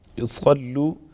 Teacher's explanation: صاد پر پڑھیں گے، لام مشدد ہے، مضبوطی کے ساتھ ذرا رک کر ادا کریں گے